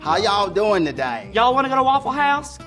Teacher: it has a much more of a southern drawl. Elongating those vowels a little bit. And saying y'all every sentence.